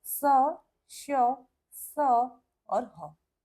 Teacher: मुख में रगड़ खाने के कारण हवा में गर्मी सी रहती है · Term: संघर्षी व्यंजन